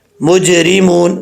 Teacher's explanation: اور جب یہ ساکن ہوں حروف قلقلہ تب ان میں ساکن ہوتا ہے، قلقلہ ہوتا ہے. تو یہاں پر جیم جو ہے یہ ساکن ہے تو یہاں پہ قلقلہ ہو رہا ہے. اگر مجرمون پڑھیں گے تو اس کا مطلب اس میں قلقلہ نہیں ہو رہا.